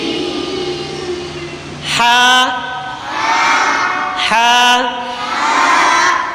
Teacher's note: ہا حلق کے درمیان والے حصے سے ادا ہوتا ہے، حلق کے درمیان والے حصے سے۔